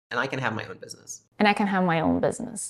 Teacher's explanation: Here we have falling intonation because this is the end of her sentence. And then the word and, she's dropping the final d, so the word becomes and I can have my own business.